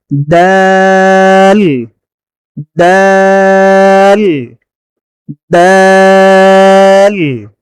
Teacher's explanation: জিহ্বার আগা সামনের উপরের দুই দাঁতের গোড়ার সঙ্গে লাগিয়ে